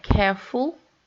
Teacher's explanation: Care is the root. And so if we have careful, we stress the first syllable